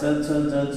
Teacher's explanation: च छ ज झ उच्चार करताना जी आहे ती तालव्य टाळूला जीभ टेकते